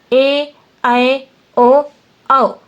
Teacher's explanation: ए, ऐ, ओ, औ ये दो स्वरों के मिलने से बनते हैं, इसलिए हमेशा बड़े ही रहते हैं मतलब दीर्घ ही रहते हैं। इनका कोई छोटा रूप मतलब ह्रस्व रूप नहीं होता है, ये हमेशा दीर्घ रूप में ही होंगे। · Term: संध्य अक्षर स्वर